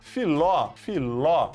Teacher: Terminou em ló. Última sílaba é forte.